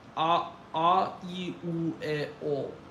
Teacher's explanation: I use pretty tense vowels for Vyosa.